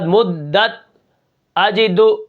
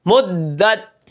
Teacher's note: دال ہے حروف شدیدہ میں سے تو یہاں پر مدت جماؤ بھی ہوگا اور سختی بھی ہوگی